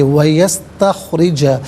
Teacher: را کے نیچے زیر ہے، را کو باریک کر کے پڑھیں گے